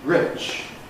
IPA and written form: rɪʧ (rich)